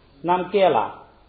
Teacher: 这个南别了读轻声，所以就是南别了就是一个尊敬的称呼